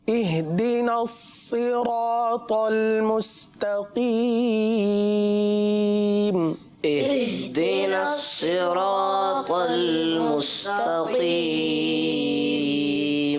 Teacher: پیارے بچوں, اس میں صاد کو پر پڑھیں گے, را کو بھی پر پڑھیں گے اور طا کو بھی پر پڑھیں گے. مستقیم 3 الف تک کھینچ کر پڑھیں گے